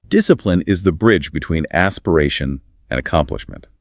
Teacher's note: A strong assertive rhythm is required here emphasizing discipline and accomplishment.